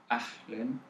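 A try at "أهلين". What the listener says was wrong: Even softer the ha. It's normal ha. And make it make the ya is more extended. So ahlen. So it's the ya, it's A.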